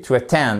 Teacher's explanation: la seconde syllabe est la syllabe accentuée